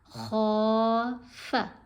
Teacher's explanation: خا کو کھینچا، فا کو نہیں کھینچنا